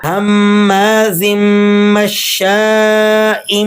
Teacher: تنوین کے بعد جب لفظ با آ جاتی ہے تو وہاں آواز چینج ہو جاتی ہے میم کی طرف، اور اسے تجوید کی زبان میں اقلاب کہا جاتا ہے۔